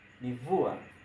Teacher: Lakini hapa kwenye mvua imebadilika kuwa mvua, manake baada ya kufuatana na va ya midomo meno imebadilika kuwa ma ya midomo meno. Lakini hapa kuna sauti ya midomo ba, kipasuo cha midomo ba, hivyo na itabadilika kufuata matamshi ya kipasuo cha midomo, ambapo nazali ya midomo ni ma.